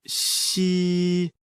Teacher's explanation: like the English word she, but with the tongue touching slightly the bottom teeth. The pronunciation is assisted by the teeth.